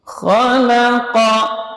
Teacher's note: Jadi huruf lam diapit oleh 2 huruf yang tebal, namun dia tetap dibaca tipis.